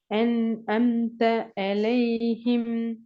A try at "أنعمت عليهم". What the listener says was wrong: அலைஹிம் என்று வர இயலாது. என்று சொன்னா நீங்க நாக்க தூக்குப்படையும் இல்ல, சவுண்ட் முன்னுக்கு உச்சரிக்கிறீங்க. நாக்க மேல தூக்கணும் பின்னுக்கால. தொண்டிட பின்பகுதி நாக்க தூக்கணும், அப்பதான் சரி.